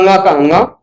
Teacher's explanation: पांचों वर्गों का पांचवा अक्षर, जिसको अनुनासिक भी कहा जाता है, नासिका से भी उच्चारण होता है